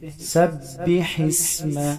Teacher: ح کو گلے کے درمیان سے ادا کریں گے. با پر تشدید ہے، اس کو سختی سے پڑھیں گے.